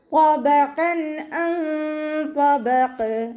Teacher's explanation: ഐനിൻ്റെ മഖ്റജ് വസത്തുൽ ഹൽക്കാണ്, സൗണ്ടിനെ വ്യക്തമാക്കി കൊടുക്കുക